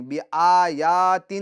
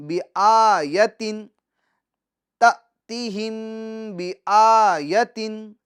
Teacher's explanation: مقدار کھینچیں گے کیونکہ اس کے اوپر کھڑی حرکات ہیں، اور یا اس پر حرکت ہے تو اس کو ہم کھینچیں گے نہیں